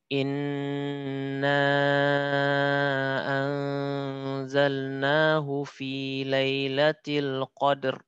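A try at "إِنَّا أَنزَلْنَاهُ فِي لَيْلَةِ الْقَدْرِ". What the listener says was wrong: Yang qadr. Qadr. Lebih tebal lagi. Qadr. Jadi dia bukan R kayak kita ya. Setebal-tebalnya huruf roh dalam bahasa Arab itu lebih tebal daripada roh kita. Bukan qadr.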